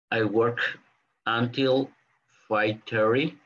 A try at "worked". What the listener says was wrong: I worked. You need to pronounce the t. Worked. It's a little difficult. I worked until, and then here you join the sounds too. Aquí también es uno de los sonidos, ¿verdad? Pasa de work, la ca, work, worked until, worked until.